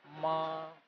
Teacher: number one tone that is in front of you which is straight